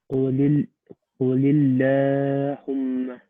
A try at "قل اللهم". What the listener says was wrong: We don't make that very long. قل اللهم.